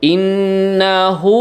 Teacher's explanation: Innahu hu-nya diayunkan suaranya ya, mat 2 harokat